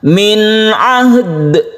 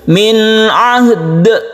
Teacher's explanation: kita pantulkan atau qalqalah, yang kita namakan qalqalah kubra karena diwaqafkan